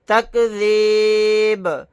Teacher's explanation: آیت کریں گے تو با کو ساکن بنائیں گے اور یہاں پر قلقلہ بھی کریں گے